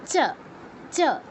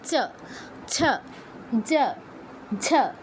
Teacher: তারপরে যেগুলো আছে সেগুলোর উচ্চারণ স্থান হচ্ছে তালু। জিহ্বা তালুতে স্পর্শ করে এই বর্ণগুলো উচ্চারণ করে।